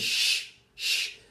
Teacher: It's a fortis sound, so no voice. It's fortis, palato-alveolar.